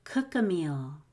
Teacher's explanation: i am going to release the k and a g sound comes out and it's that g sound that links to uh